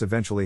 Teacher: in this case the accent is in the second syllable corresponding to then below are other ways to pronounce it now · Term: accent or stress